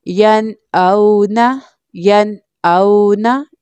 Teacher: अब यहाँ पर नून साकिन है बट नून साकिन के बाद हमज़ा लेटर है जो कि थ्रोट लेटर है, हल्की लेटर है इसलिए यहाँ पर हम इजहार करेंगे यानी गुन्ना किए बगैर पढ़ेंगे